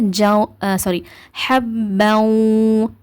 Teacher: இவ் சவுண்டு நம்மளுக்கு ஃபுல்லா வராது. இவ்வு கூட நூனோட சவுண்டும் சேர்த்து மிக்ஸ் ஆகிதான் வரும். அதனால ஜாரி ஹப இந்த மாதிரி ஓதுங்க. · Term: முழுமையற்ற இணைத்தல்